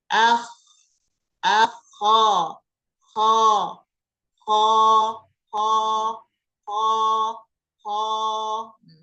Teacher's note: huruf kha, makhrajnya ujung tenggorokan atau tenggorokan bagian atas. Jadi tepatnya nih di bawah dagu di sini.